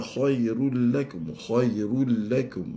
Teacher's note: khairul lakum baris dua berjumpa dengan lam bila ghunnah kamil